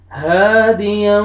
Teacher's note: اور یہ الف مدہ ہے، الف سے پہلے فتحہ، ہا کو آپ نے کھینچنا ہے · تنوین کے بعد حروف یرملون میں سے واو آ رہا ہے، آپ نے یہاں پہ ادغام کرنا ہے غنہ کے ساتھ